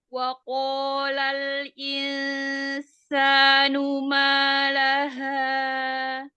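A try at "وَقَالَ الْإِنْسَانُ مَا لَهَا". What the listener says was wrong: Ya, laha itu tidak ada tamtid. Wa qalal insanu ma laha. Langsung. Laha, jangan laha. Nah, itu ada tamtid. Jadi tidak diayun laha, laha. Sama kayak ketika menyebut waqo, nggak boleh. Waqolal, nggak boleh diayun.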